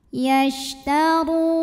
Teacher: Yashtaru, ru mad tabi'i zahiri karena ada waw sukun didahului baris dhammah. Cara membunyikannya panjang, ro-nya 2 harokat. · huruf ra dibunyikan secara tafkhim karena ro-nya ini berbaris di atas dhammah. Cara bacanya tebal, pangkal lidah kita naik.